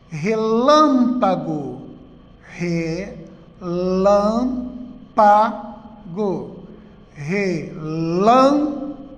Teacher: antepenúltima sílaba mais forte proparoxítona